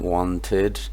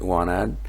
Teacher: So instead of being pronounced id, okay, like wanted, that could be pronounced like wanted, with a schwa there, okay, in the unstressed position there in the suffix